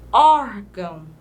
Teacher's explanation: o ó é mais aberto e também essa sílaba a junção do o com R é uma sílaba tônica